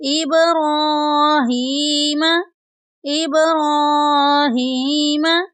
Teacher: را کے اوپر کھڑی زبر ہے، اس کو بھی لمبا کریں گے۔ ہا کے نیچے کھڑی زیر ہے، اس کو بھی لمبا کریں گے۔